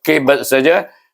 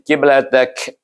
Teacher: Kuat bunyi lantunannya. Tapi bila kita sambung dengan lam, dia bunyi kiblatak. Jadi perlahan bunyi lantunannya.